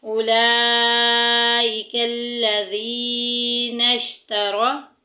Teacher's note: یا ساکن پیچھے زیر آ گئی ہے، یا مدہ کا قاعدہ جاری ہوگا، ایک الف کے برابر لمبا کریں گے۔